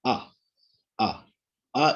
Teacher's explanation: it is low back unrounded long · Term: long vowel